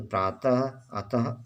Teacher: इसका उच्चारण कंठ से होता है, इसे बोलते समय ह की ध्वनि आती है